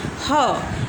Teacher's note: ग्लोटल्स, produce by restricting the air flow through the open glottis ह और बाय stopping the air completely at the ग्लोटस।